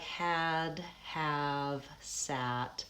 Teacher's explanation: in order to make this vowel, my tongue is forward and low in my mouth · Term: low front unrounded vowel